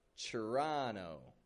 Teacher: Making that final T silent and the first T like a chur.